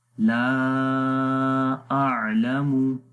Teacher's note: لام کو بھی لمبا کریں گے، الف مدہ ہے، الف سے پہلے زبر آ گئے